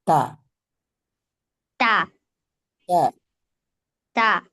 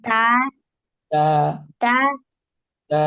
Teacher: জিহ্বার আগা সামনের উপরে দুই দাঁতের গোড়ার সঙ্গে লাগিয়ে উচ্চারিত হয়